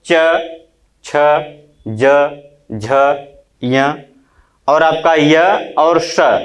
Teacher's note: लघु ई, दीर्घ ई और च वर्ग के सभी वर्ण तथा य और श, इन वर्णों का उच्चारण स्थान क्या होता है? तालु।